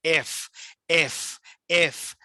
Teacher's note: এটাকে লেবিও dental sound বলে, উপরে দাঁত নিচে ঠোঁটে লাগবে, এফ এফ এফ। যদিও ফয়ের মতো কিন্তু ওষ্ঠধ্বনি না, এটা হবে উপরে দাঁত নিচে ঠোঁট, এফ।